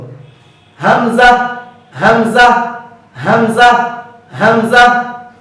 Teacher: কণ্ঠনালীর শুরু থেকে হামজা হরফটি উচ্চারিত হয়। হামজা হরফটি পড়ার সময় আওয়াজ মিডিয়াম হবে, চিকন হবে, নিচের দিকে দাবিত, বাতাস বন্ধ, হামজা হামজা হামজা হামজা।